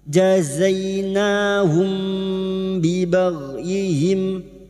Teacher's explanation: sukun dibaca jelas namun kali ini ini bertemu ba Ikhfa Syafawi siap masuk pada huruf ba ya mendengung selama tiga harakat